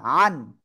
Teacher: আইন দুই জবর আন, আন, আন, আন, আন, এরকম না, আন। গলা চেপে, সিম্পলি যে আন, কলমটা আন, এটা না। আন, গলা চেপে হবে, হ্যাঁ।